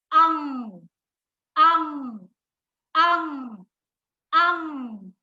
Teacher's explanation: अंग जो है वो वर्ण की खड़ी पाई के ऊपर बिल्कुल मध्य में उसका बिंदु लगाया जाता है। अंग बोलते समय नाक से तो हवा निकलती है, ध्वनि आती है, लेकिन मुख जो है वो ध्वनि को अवरोध करता है, रोक लेता है उसको।